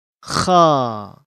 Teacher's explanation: dikeluarkan dari ujung tenggorokan